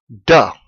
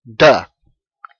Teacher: your tongue presses about the middle of the roof of your mouth and you use your vocal chords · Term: voiced